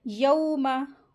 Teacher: वाव लीन है, इसको नरमी के साथ पढ़ेंगे। वाव साकिन से पहले ज़बर आती है तो लीन वर्ड होता है, वाव लीन होगा यहाँ पे।